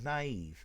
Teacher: But these two dots, they tell you that it's naive. It's not a diphthong. You split the the two syllables.